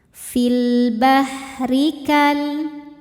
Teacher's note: Huruf ra dibaca secara tarqiq. Karena berharakat kasrah. Cara bacanya tipis.